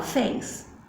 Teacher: Fé é de tom aberto